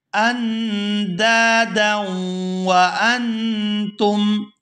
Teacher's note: للہ اندادا، یہاں حمزہ کو نون ساکن کے ساتھ ملائیں گے تو اخفا کریں گے اور آگے دال کو الف مدہ کی وجہ سے کھینچ کر ادا کیا جائے گا۔ اندا، آگے دال کو واو مشدد کے ساتھ ادغام کریں گے تو غنہ کریں گے